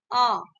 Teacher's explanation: अ जो है आपका अग्र स्वर नहीं है, ये पीछे से बोला जाता है